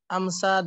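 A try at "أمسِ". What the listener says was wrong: Bukan amsa bacanya ya, amsi. Ya, tidak ada kata amsa. Ada amsa tapi belakangnya ada bengkongnya, ya. Artinya memasuki waktu sore. Amsa termasuk akhwat kana. Ya, nanti dipelajari pada jilid 2. Amsa artinya memasuki waktu sore. Termasuk akhwat kana. Adapun kalau itu namanya amsi.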